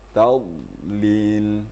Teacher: Artinya dhad itu tidak boleh dipantulkan dalam bacaannya. Walaupun dia hurufnya besar ya, mempunyai ketebalan, tapi tidak boleh dipantulkan. Harus didatarkan. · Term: huruf dhad